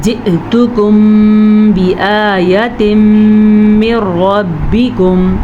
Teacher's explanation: قد خوف موٹا ہے, حروف مستعلیہ میں شامل ہے تو موٹا پڑھیں گے. دال پہ کلکلا ہوگا, دال حروف کلکلا میں شامل ہے. · حمزہ جھٹکے کے ساتھ پڑھا جائے گا. اگر جی تو کم پڑھیں گے تو یا مدہ بن جائے گا.